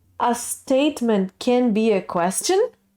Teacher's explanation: there's a constant intonation and then in the end it rises up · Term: question statement